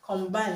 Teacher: Combine has a stress on the second syllable, okay, because it's a verb.